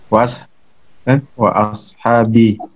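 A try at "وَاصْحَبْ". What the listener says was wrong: Kalau dibaca wa ashab itu seakan-akan jamak lah ya. Jamak dari kata ashab, sahabatun menjadi ashab.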